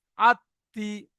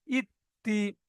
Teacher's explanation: এই তাজদিদ থাকার কারণে এই অক্ষরটি দুবার উচ্চারণ করে পড়তে হচ্ছে। একবার আগের অক্ষরের সাথে মিলিয়ে, একবার নিজের অক্ষরের সাথে।